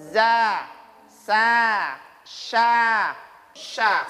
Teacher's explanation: Ketika kita menyebutnya, maka posisi mulut ini, posisi mulutnya antara lidah dengan langit-langit, lidah dan langit-langit tidak saling menyentuh. Dia keluarnya mengalir. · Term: infitah